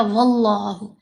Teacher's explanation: जब इस लाम से पहले वाले हरफ के ऊपर ज़बर हो या पेश हो तो लफ्ज़ अल्लाह की लाम को पुर पढ़ते हैं, मोटा पढ़ते हैं · ये लफ्ज़ अल्लाह, इस लाम को हमने मोटा पढ़ा